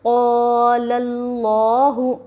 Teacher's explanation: قال اللہ، قاف الف زبر قا، لام لام زبر لل، قالل، لام کھڑا زبر لا، قال اللہ، ہا پیش ہو، قال اللہ۔ الف سے پہلے قاف کے اوپر زبر حروف مدہ تھوڑا کھینچ کر پڑھے۔ لفظ اللہ سے پہلے لام کے اوپر زبر لفظ اللہ کے لام کو پر پڑھیں گے، ہا کے اوپر پیش حرکت تھوڑا بھی نہ کھینچے۔